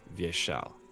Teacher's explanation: in Vyeshal, the second syllable is always the emphasis.